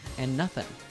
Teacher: The D in the word and is dropped, and she joins the words and nothing with the N sound